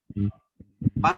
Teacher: tiba-tiba rapat bibir atas dan bibir bawah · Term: huruf bibir